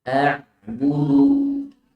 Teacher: Ain makhrajnya di tengah tenggorokan.